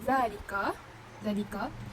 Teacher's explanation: Mad asli sebab huruf zal dia berharakat fathah bertemu alif dan setelahnya tidak bertemu hamzah, sukun, waqaf dan tasydid. Jadi cara membacanya panjang 2 harakat.